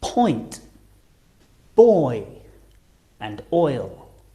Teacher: They're on different rows again, but the shape of our lips and the position of our tongue also change a lot because we're going from the right all the way to the left, going from rounded lips to unrounded, starting on the o and finishing on the I or E